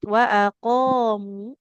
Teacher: Qaf panjang, mim tidak bertasyid.